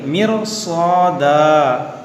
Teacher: دیکھیے را کو موٹا کریں گے. را ساکن سے پہلے زیر اصلی ہے مگر اس کے بعد حروف مشتعلیہ ہے، اس کے وجہ سے اس کو ہم موٹا کریں گے.